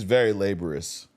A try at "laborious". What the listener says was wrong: It's no H on that. It's just laborious, laborious.